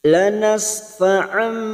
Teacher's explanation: masuk pada huruf ba mendengung selama tiga harakat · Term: bacaan iqlab